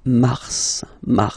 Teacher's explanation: then Mar okay so in a way it's an exception because normally final s is not pronounced in French okay we've got some exceptions and this one is one of them so Mar pronounce the final s